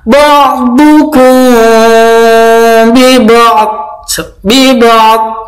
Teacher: mim sukun bertemu dengan ba, bacaan ikhfa safawi, samar.